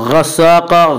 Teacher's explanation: قاف کو پر پڑھیں گے. قاف حروف مستعلیہ میں سے ہے. حروف مستعلیہ 7 ہیں جن کا مجموعہ خصہ ضغط انقذ ہے جو ہمیشہ ہر حال میں پر پڑے جاتے ہیں.